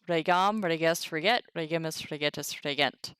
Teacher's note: So A for the first person singular, a long E for the rest.